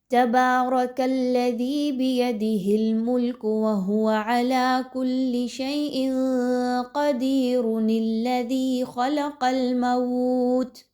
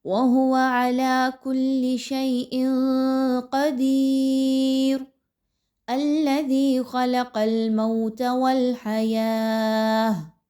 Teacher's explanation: آیت نمبر 1 پر وقف کیا، آیت نمبر 2 کو سٹارٹ کیا، تو پھر آپ اس نون زیر نی کو لام کے ساتھ نہیں ملائیں گے